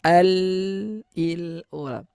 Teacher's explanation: huruf lam adalah salah satu huruf yang ketika dalam keadaan sukun dia memiliki sifat tawassut ya pertengahan antara rokhawah dan syiddah